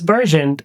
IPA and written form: ˈbɜːr.dʒənd (burgeoned)